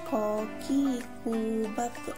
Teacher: Melafalkan huruf ko menyentuhkan pangkal lisan dengan langit-langit bagian belakang dan diucapkan dengan memantul.